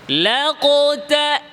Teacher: লাম পাতলা কফ মোটা লাকতা কফে ঠোট গোল তাই না ঠোঁট গোল হবে